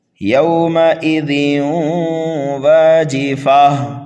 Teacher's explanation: تنوین کے بعد میں واو آ رہا ہے یرملون میں سے، یہاں پر بھی ادغام ہوگا۔ یومئذ واجفہ، اس واجفہ پر وقف کریں گے، وقف بالابدال ہوگا یہاں پر۔